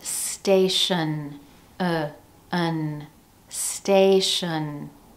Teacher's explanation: That first syllable has all the stress.